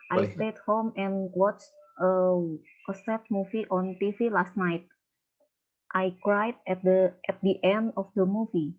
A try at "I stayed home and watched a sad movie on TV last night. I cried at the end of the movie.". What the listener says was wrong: Ya, bagus. Ya, the end ya, ucapannya betul.